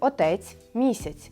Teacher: А також ми маємо м'який ц